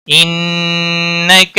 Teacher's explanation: ان نون مشدد پر گنہ ہوگا، کا کو کھینچنا نہیں۔